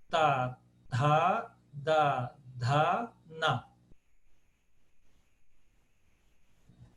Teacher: Então, todos os sons, a língua encosta aqui nos dentes. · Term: sons dentais